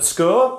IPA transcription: sk